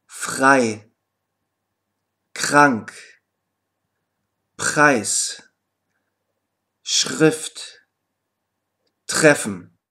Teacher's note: R kann am Silbenanfang jedoch auch wie ein R ausgesprochen werden, wenn es auf einen stimmlosen Konsonanten folgt. In diesem Falle überträgt sich die Stimmlosigkeit auf das R.